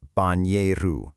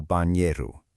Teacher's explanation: The NH combination in Portuguese makes a nya sound, making it banheiro.